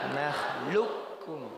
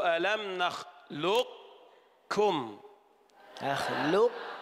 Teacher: أين القاف؟ أدغمت إدغاما كاملا، ننطق كافا فقط.